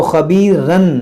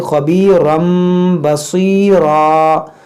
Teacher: یہاں پر تنوین کے بعد با، یہاں پر اقلاب ہوگا، یعنی اس کو پڑھیں گے خبیرم، اس کو خبیرن نہیں پڑھیں گے بلکہ خبیرم بصیرا.